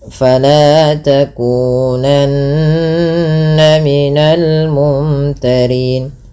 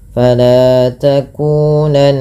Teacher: Fala mad tabi'i, lanya 2 harakat. Takunanna, nun berharakat tasydid, dibaca dengan gunnah. Cara membacanya dengan menahan bunyi suaranya. Fala takunanna, ditahan.